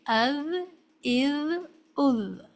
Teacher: ذال کو ادا کرنے کے لیے ضروری ہے کہ ٹپ آف ٹنگ اوپر کے سامنے کے دو دانتوں کو، جن کو ہم ثنایا علیہ کہتے ہیں، کے کناروں سے لگنی چاہیے، از، از، از، اور یہ باریک حرف ادا ہونا چاہیے۔